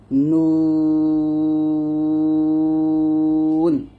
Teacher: তারপর হচ্ছে 9 নং মাখরাজটা হচ্ছে জিহ্বার আগা তার বরাবর উপরে তালুর সঙ্গে লাগবে নুন। জিহ্বার আগাটা আপনারা তার বরাবর উপরে তালুর সঙ্গে লাগিয়ে নুনটা উচ্চারণ করবেন,